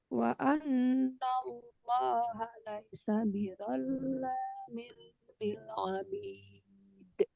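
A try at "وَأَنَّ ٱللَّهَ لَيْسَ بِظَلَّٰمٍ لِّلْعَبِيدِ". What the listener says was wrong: Tebalkan sedikit, tambah lagi. Itu udah bagus, tapi kurang. Tambah lagi tebalnya.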